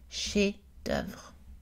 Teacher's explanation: Par contre, chef est prononcé avec un F, donc on a une voyelle mi-ouverte, est chef. Attention au mot chef-d'œuvre, dont le F est muet, ce qui change la prononciation de la voyelle.